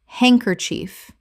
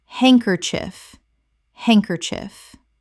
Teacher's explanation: Three syllables in natural speech. The D in hand is silent, and the final syllable is reduced.